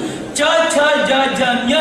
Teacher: ನಾಲಿಗೆ ಹೋಗಿ ಮೇಲಿನ ಪ್ಯಾಲೆಟ್ಗೆ ಬಡಿಯುತ್ತೆ